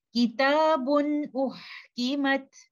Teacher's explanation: When I say kitabun, I am giving noon sakina hidden in tanween and that noon sakina cannot come without the nasal sound. Ghunnah is there, but I'm not holding it for a very long time. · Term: incomplete ghunnah